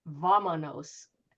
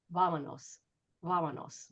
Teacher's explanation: the V is usually pronounced in Spanish as closer to a B.